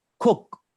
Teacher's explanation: You don't stretch out the sound in the short vowel